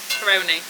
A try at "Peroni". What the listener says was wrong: It sounds like you're saying Coroni. I was like, what's going on?